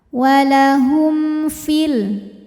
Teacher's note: hukum izhar syafawi karena mim sukun menghadapi huruf selain mim dan ba yaitu huruf Fa maka mim sukun dibunyikan dengan jelas